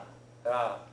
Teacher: what they call a Japanese R is softer than an English R, but not quite as soft as an L.